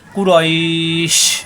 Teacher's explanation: শিন শ্বাস আওয়াজ হবে কুরাইশ, জিব্বার মাঝখানে উপরে তালুতে চাপ দিয়ে